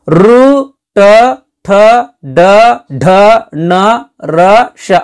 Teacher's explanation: ನಾಲಿಗೆಯ ಮೇಲ್ಭಾಗದ ಮೂರ್ಧವ್ಯ ಎಂಬುದರ ಮೂಲಕ ಈ ಅಕ್ಷರಗಳು ಹುಟ್ಟುತ್ತವೆ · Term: ಮೂರ್ಧನ್ಯಗಳು